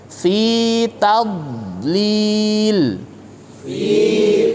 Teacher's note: hurufnya terasa lengket betul menempel karena dia itbaq